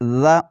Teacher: ہے، سیٹی کی آواز بالکل نہیں نکالنی آپ نے، یہاں پر زبان کی نوک سامنے والے دونوں دانتوں کے اندرونی کناروں سے لگے گی تو ذال ادا ہوگا